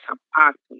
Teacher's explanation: A paroxítona sapato, ela não possui acento gráfico, mas ainda assim ela tem como sílaba tônica a penúltima sílaba